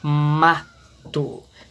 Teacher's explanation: Então, ma é a sílaba mais forte. Então, ela é uma sílaba tônica.